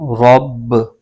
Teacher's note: آگے را پر زبر ہے اور آگے با مشدد حرف ہے، با کو را کے ساتھ ملائیں گے، اور با حروف قلقلہ کا حرف ہے، اس کو خوب جماؤ کے ساتھ پڑھیں گے